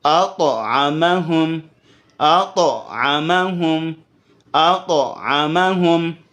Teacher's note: تو کو باؤنس کریں گے جزم کی حالت میں